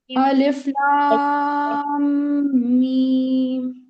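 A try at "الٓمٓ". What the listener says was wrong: آپ نے غنہ کم کیا ہے.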